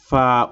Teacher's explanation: নিচের ঠোঁটের পেট সামনের উপরের দুই দাঁতের আগার সঙ্গে লাগাইয়া